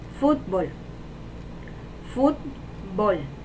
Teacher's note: La sílaba tónica es fut. Y sería grave.